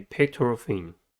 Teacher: Pectoral has 3 syllables and the stress is at the first one.